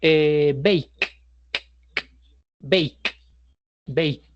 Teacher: Si me toco la garganta, no vibra. Por eso su versión pasada se llamará baked.